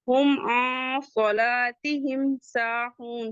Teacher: میم ساکن کے بعد پھر سین آ رہا ہے، یہاں پہ اظہار شفوی ہوگا ، ہم صلاتہم ساہون، سین کے بعد کا الف مدہ ہے · سین کے بعد کا الف مدہ ہے ٹو کاؤنٹ پڑھیں گے